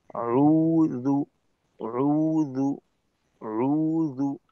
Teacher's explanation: প্রথমবার গোল করে উচ্চারণ শেষ করব, তারপর ঠোঁটের গোলটাকে একটু ভেঙে দ্বিতীয়বার গোল করে জু এর উচ্চারণ করব, এতে করে জালের উচ্চারণটা সুন্দর হয়।